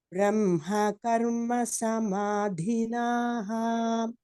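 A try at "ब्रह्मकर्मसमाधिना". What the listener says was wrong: No visargam. It is a strilingam. Sorry, it's a tritiya vibhakti, so karma samadhina.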